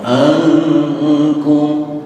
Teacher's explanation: Nun mati ketemu kaf ikhfa, namun ikhfanya ikhfa abaan, ikhfa jauh, maka suaranya ankum.